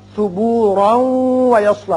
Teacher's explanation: را کی تنوین واو سے ملے گی، ادغام غنے کے ساتھ ہوگا